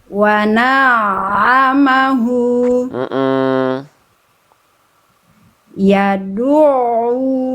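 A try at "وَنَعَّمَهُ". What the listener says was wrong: Nah, ini ainnya tipiskan dulu. Nah, jadi senyumin dulu, tipisin dulu.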